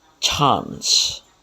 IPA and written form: tʃɑːns (Chance)